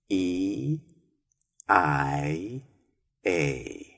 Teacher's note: You will notice that you must close your mouth a little to finish the I and A sounds. And that is where you will hear the E vowel sound at the very end.